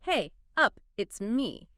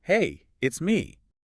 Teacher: It specifically notes that the pitch isn't flat. It goes up slightly on hey, and then it comes down at the end on me. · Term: rise-fall pattern